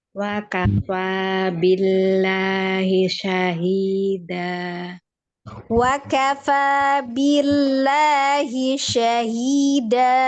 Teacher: Fa matobi'i dia mempunyai sifat hamas. · dibacanya tipis atau tarki karena sebelum lafaz jalalahnya hurufnya berharokat Kasroh. kasroh ya. Setelahnya matobi'i. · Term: lam jalalah